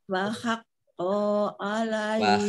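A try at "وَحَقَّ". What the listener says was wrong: Wa haqqo, konya pendek.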